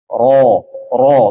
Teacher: kan tidak mengangkat dia ada ada lidahnya di sini ya kan lidahnya ujung lidah bertemu dengan gusi atas